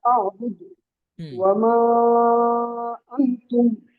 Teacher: মাদের হরফের পর দ্বিতীয় শব্দের শুরুতে হামজা আসলে 2 আলিফ টেনে পড়তে হয়। এটাকে 2 বা আড়াই আলিফ দিয়েও পড়া যায়, অর্থাৎ 4 বা 5 হরকত। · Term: মাদ্দে মুনফাসিল